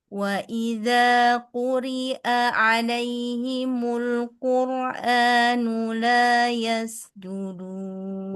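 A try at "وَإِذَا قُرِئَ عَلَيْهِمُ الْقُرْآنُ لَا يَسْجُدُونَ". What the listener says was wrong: Ulang lagi. Quri hamzah bukan ain.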